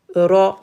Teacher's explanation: Je roule le R, le bout de la langue.